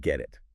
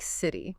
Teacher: When a T sound comes between two vowel sounds, it often softens. It sounds less like a sharp t and more like a soft d or even sometimes a quick r sound. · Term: flap T